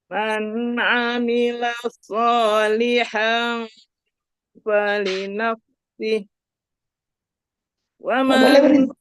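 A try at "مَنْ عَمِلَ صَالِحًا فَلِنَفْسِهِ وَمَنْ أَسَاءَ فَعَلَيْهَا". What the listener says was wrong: Tidak boleh berhenti di sana katanya. Falinafsihi wa man asa langsung.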